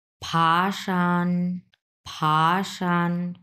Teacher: প্রথমে দুই number টন তারপরে এক নাম্বার টন